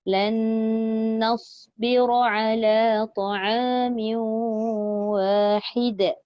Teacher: Pendek je sebab dia tak ada mat antara ha dengan dal.